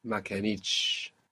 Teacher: we have the accent on the end there because of the consonant cluster because of the two consonant sounds t on the last syllable